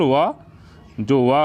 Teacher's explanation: दांत और निचले होंठ की सहायता से जो बोले जाता है उसे दंतोष्ठ व्यंजन कहते हैं।